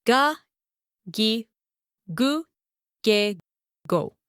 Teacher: The sound becomes voiced. Your throat vibrates.